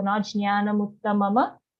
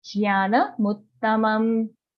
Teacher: Mutta, double ta, muttamam. The last ma at the end of this charan is only halant or half. Okay, so not jnana muttamama, jnana muttamam.